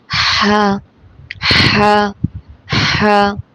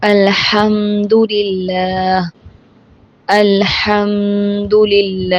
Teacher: ہا حلق کے درمیانی حصے سے ادا ہوتا ہے